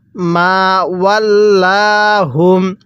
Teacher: এই যে মিমের মধ্যে এক আলিফ টান দিব